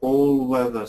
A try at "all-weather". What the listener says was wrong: It sounds like oh. It sounds like oh, but I want the AW. Do you remember how to make the AW sound? No, that's an O.